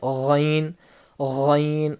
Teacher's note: حلق کا اوپر کا سوکھا حصہ، حلق کے اوپر کے سوکھے والے حصے سے غین ادا ہوتا ہے